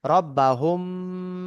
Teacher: মিম সাকিনের পরে যদি আপনার বা আসে তাহলে মিম সাকিনকে গুন্না ইকফা করে পড়তে হবে একে ইফা শাফাবি বলে এখানে মিম সাকিনের পরে বা এসছে তাই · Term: ইকফায়ে সাফাবি